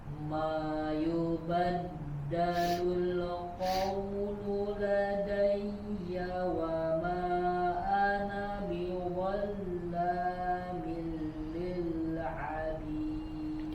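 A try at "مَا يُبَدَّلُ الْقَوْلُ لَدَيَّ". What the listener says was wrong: Ya, masih menggema huruf ma-nya. Suaranya diarahkan ke bawah. Mayubaddalul. Kemudian di sini lamnya tidak dipantulkan ya, tidak dipantulkan. Mayubaddalul qawlu ladayya wa ma.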